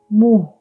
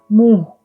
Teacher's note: There is a very, very, very faint N sound. So it's not muh. It has a slight N sound